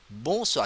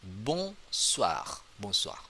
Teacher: There's no N. We not pronounce clearly the N, but we have it like nasal sound.